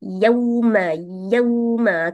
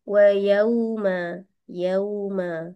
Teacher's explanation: untuk huruf wau mati sebelumnya baris atas ada sifat lembut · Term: Lin